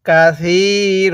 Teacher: দুই জবরের মধ্য থেকে একটি জবরকে বাদ দিয়ে আরেকটি জবরে এক আলিফ টেনে পড়বো